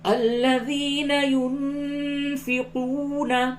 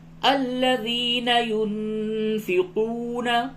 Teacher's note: واو مدہ ہے، تھوڑا سا کھینچ کر کے پڑھیں